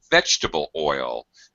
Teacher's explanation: Notice the stress pattern, vegetable oil. You go high on the first word and low on the second.